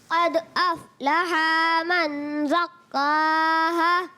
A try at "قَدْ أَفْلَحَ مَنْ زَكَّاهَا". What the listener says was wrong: قد افلح. پیارے بچے جب یاد رکھیں پیارے بچوں اور مدنی چینل کے ناظرین، حرکات جو ہوتی ہے نا ان کو ہم کھینچتے نہیں، بغیر کھینچے ادا کریں. قد افلح من زکاها. افلح.